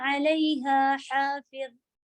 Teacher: علیہا پھر ہا اور ہا کی آواز بالکل الگ رکھیے گا